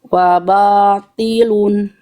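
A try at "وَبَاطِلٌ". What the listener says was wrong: Ti. Tapi wawu dan ba-nya tipis, jangan waba. Waba. Kalau di slow motion baca pelafalan mulutnya begini. Wabatilun. Jangan waba, tapi wabatilun.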